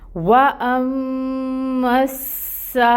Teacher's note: واؤ کے اوپر لپس کو راؤنڈ کریں، فتحہ کی ادائیگی 1 کاؤنٹ، حمزہ محقق 1 کاؤنٹ فتحہ کی ادائیگی، میم مشدد ہے غنہ ہوگا 2 حرکت کے برابر، میم مشدد ہے پھر آگے سین بھی مشدد ہے تو میم کو سین کے ساتھ ملائیں گے، ٹائم ٹیکنگ ہوگا۔ · اور اس کے اوپر ہمیں مد بھی نظر آ رہی ہے، یہ مد متصل ہے اور اس کی مقدار ہوگی 4 to 5 کاؤنٹس۔ مد کو 4 سے 5 کاؤنٹ لمبا کھینچیں گے اور اس کے بعد حمزہ کے نیچے کسرہ کی حرکت ہے، 1 کاؤنٹ ادائیگی ہوگی، ای کی ساؤنڈ آئے گی، لام کے اوپر فتحہ 1 کاؤنٹ ادائیگی ہوگی اس حرکت کی بھی۔